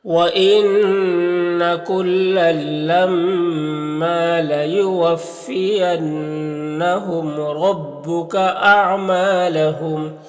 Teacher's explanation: ما میں الف مدہ ہے تو ایک الف کے برابر کھینچیں گے